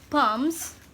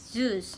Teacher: voiced sound is followed by a voiced variant of the plural